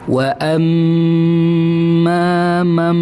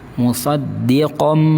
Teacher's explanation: Contoh, wa amma mam bibirnya rapat. Mam makhrajnya mim itu bibirnya dirapatkan. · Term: suara mim